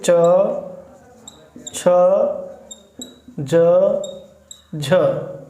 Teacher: आप चा को उच्चारित करिए, बोलिए, तो बोलने के बाद आप देखेंगे कि च, छ, ज और झ, इन सभी वर्णों के उच्चारण में जो हमारी जिह्वा है वो तालु से स्पर्श करती है। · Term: स्पर्श संघर्षी व्यंजन